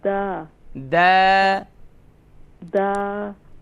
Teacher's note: الف مدہ ہے نا ایک الف کی مقدار کھینچیں گے اسے